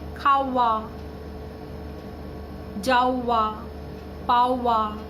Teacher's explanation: এইগুলোকে বলা হয় ব শ্রুতি, অর্থাৎ মাঝখানে যেন একটা ব আসার ফলে একটা ওয়ের উচ্চারণ হচ্ছে